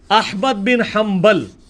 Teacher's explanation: با آ گیا نون ساکن کے بعد تو نون مکمل ختم ہو جاتی ہے